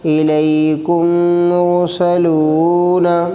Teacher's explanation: میم ساکن کے بعد میم ہے، اس لیے میم کو میم سے ملا کر غنہ کے ساتھ پڑھیں گے، اس کو ادغام شفوی کہتے ہیں۔